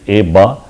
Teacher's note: So in between the low amplitude signal with a slight periodicity, so this is due to the vowel b. Where in case of ba, where there is a constriction, complete constriction at the lips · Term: voiced stop